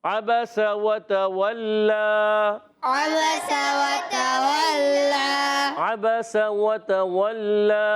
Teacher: لام پر کھڑا زبر ہے، ایک الف کھینچ کر ادا کریں گے، مگر جب یہاں وقف کریں گے نا تو یہ مد نہیں پڑھیں گے